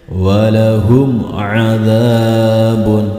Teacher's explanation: Maka ini termasuk bacaan idhar, harus dibaca jelas. Mimnya tidak boleh dipantulkan dan tidak boleh didengungkan, harus dibaca jelas.